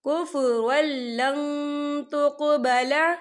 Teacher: ان الذین کفروا بعد ایمانہم ثم ازدادوا کفرا لن تقبل، یہاں دیکھیے کفر را کے پر تنوین ہے، تنوین کے بعد جو ہے لام آ رہا ہے، اور لام جو ہے حروف یرملون میں سے ہے تو یہاں پر ادغام ہوگا اور ہم اسے بنا غننے کے پڑھیں گے۔